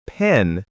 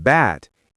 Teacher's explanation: the sound of P in pen uses a puff of air, while the sound B in bat is softer and doesn't have that air burst.